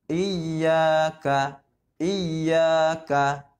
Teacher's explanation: Iya, iya, iya ka. Dan ka-nya tidak panjang, yang panjang adalah huruf ya. Matobinya di huruf ya-nya. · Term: mad tabi'i